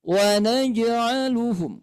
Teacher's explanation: Jim ini mempunyai sifat Qalqalah qqalah itu artinya memantul gitu ya Nah huruf qalqal itu ada